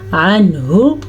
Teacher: یہاں پہ اظہار کا قاعدہ ہو رہا ہے کیونکہ نون ساکن کے بعد ہا آ گیا ہے، حروف حلقی میں سے ہے.